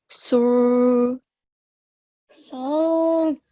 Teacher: for Sod, we are raising the back of our tongue, okay, to get that thick sound